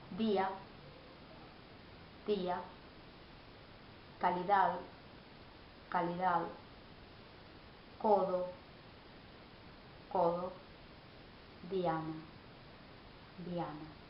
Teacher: In Spanish, da sounds da. It's a dental sound, and the difference is given by the place of articulation. The tip of the tongue will touch the edge of the upper teeth